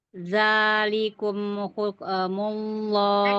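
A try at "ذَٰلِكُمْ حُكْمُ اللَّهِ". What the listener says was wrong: Kafnya jangan jangan dipantulkan. Zalikum hukmullah.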